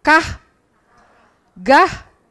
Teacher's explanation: Lidah belakang menyentuh langit-langit yang lunak.